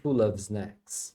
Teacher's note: pode ouvir o v ou não depende da pessoa que tá falando